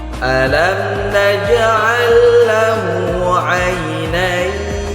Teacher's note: Huruf ya mati sebelumnya itu hurufnya harakat fathah. Maka ini disebut dengan mad lin. Madlin itu bacanya harus kita lembutkan.